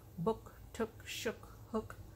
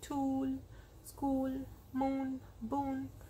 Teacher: the only difference between the short and the long is the short o is very fast